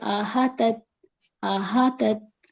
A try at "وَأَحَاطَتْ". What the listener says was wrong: احاطت نہیں، ہا کے ساتھ کھڑا زبر ہے، اسے ڈراپ نہیں کرنا، وَأَحَاطَتْ،